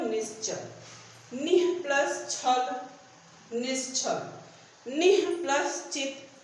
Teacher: विसर्ग का लोप होकर के अर्धमात्रिक तालव्य श आया, तो क्या हो गया, निश्चित।